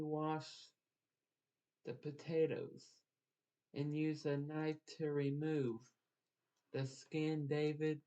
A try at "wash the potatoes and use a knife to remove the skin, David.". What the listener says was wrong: Take a breath, because you need a breath between so people know that skin was the last word. Remember, breath when you see a period.